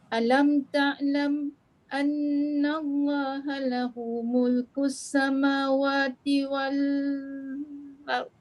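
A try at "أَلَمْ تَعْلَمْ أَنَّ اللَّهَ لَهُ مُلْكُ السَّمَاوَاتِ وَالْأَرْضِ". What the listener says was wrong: Lama berfikir tu, sebab tu jadi panjang tu. Jangan fikir panjang sangat. Sakta je. Wal ard, itu je.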